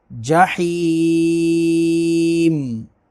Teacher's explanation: وقف کی وجہ سے میم کو ساکن کریں گے تو عارضی سکون مد عارض ہوگی۔ ولن، ولن، نون ساکن کے بعد تا ہے تو یہاں پر اخفا ہوگا، غنہ کریں گے۔